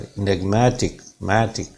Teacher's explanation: enigmatic में माँ sound पे स्ट्रेस आएगा